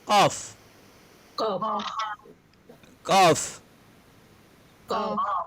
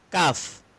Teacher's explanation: cara menyebutnya dia tebal qaf. Sedangkan kaf lidah agak naik, pangkal lidah naik sedikit. Kaf dia tidak harus ditekan macam qaf.